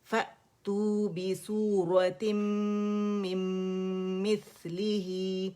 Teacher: نون جو ہے میم کے اندر یہ چلا گیا · یہاں میم مشدد ہے, اکمل گریڈ کا ہم نے غنہ کرنا ہے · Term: ادغام تام بالغنہ